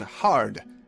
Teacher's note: A is another unchanging, never-bending vowel. It's not hard, but it is in the word hard, and that's what it always sounds like.